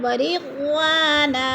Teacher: ورضوانا، واو کے آگے الف مدہ ہے، الف خالص سے پہلے واو کے اوپر زبر ہے تو ادھر الف مدہ کو 1 الف 2 حرکات کے برابر لمبا کر کے پڑھنا ہے